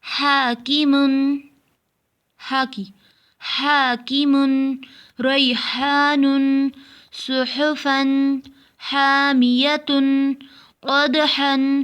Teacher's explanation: ہا کا مخرج تھا وسط حلق